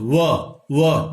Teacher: ये दंत और ओष्ठ से व बोला जा रहा है। इसका उच्चारण स्थान है व का दंत और ओष्ठ। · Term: दंत ओष्ठ